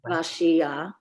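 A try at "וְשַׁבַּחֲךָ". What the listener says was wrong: See, when you see a chet at the end of a word with this vowel under it, it's read ach. I want everybody to look at that because that's an exception to every rule.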